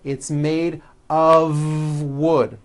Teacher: It's not a wood with an unvoiced F. It's all voiced and it's all connected. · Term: voiced V